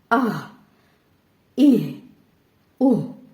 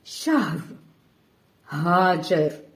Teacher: ہا جو ہے حلق کے درمیانی حصے سے نکلتا ہے اور جو ہا دو چشمی ہا ہے یہ سینے سے نکلتا ہے